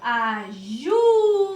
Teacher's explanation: Eu falo ajuda. Então, o ju é a sílaba tônica.